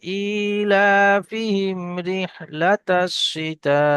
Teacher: মিম সাকিনের পরে র এসছে, এই জায়গায় গুণনা হবে না